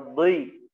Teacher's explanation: Itbaq seperti do, ya. Do dalam keadaan apapun, baik setelahnya huruf tipis atau bahkan dia berharokat kasroh, tetap dibaca tebal.